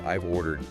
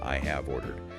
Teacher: Often it sounds more like just the initial I followed by a really soft V sound almost blending directly into the next word